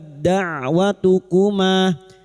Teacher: sifat hamesnya pada huruf ta ini hilang karena masuk pada huruf dal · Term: idgham mutajanisan